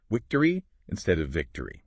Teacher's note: in many Indian languages, the distinction between V and W just isn't as sharp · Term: V and W sounds